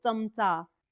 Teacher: लिहितो पण तरी हे एक्सेप्शन आहे च हा अल्पप्राण आहे आणि जेव्हा आपण च म्हणतो चमचा तो च आहे तो काय आहे तो दंततालव्य आहे